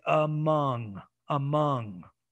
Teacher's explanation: schwa but then when i got to the stress syllable i changed it to a wedge